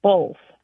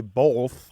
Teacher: the word B-O-T-H sounds like it has an L in it, as if it's spelled B-O-L-T-H.